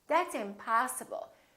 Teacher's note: we prolong the I in the stressed syllable